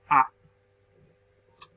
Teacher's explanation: la vocal central es la A, porque se forma en el centro de la boca.